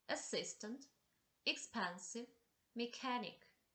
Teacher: The Words which have the stress on the second syllable